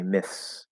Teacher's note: So you might have maybe your tongue gets a little bit of the TH, myths, okay, myths. And it's like a light TH to S, and we might hear a bit of a transition between the two.